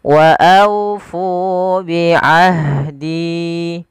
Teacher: Kemudian wa aufu, sama seperti alaikum, aunya lembutkan sambil dimonyongkan sedikit bibir kita ke depan untuk menyempurnakan daripada huruf wawnya.